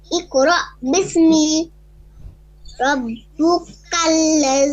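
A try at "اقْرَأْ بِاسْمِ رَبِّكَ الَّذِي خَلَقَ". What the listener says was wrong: রব্বি, আগে এখানে ভুল করে গেলেন, এটা ঠিক করে নি। রব্বি, এখানে রব্বু নাই, রব্বি কাল্লাযী খলাক।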